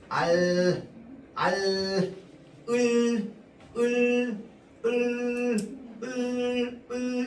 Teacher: 혀 끝을 윗 잇몸에 댄 채 공기를 양옆으로 흘려보내면서 소리를 냅니다. 알, 을, 이러면 혀 끝이요 일단은 윗 잇몸에 붙어야 돼요. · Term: 유음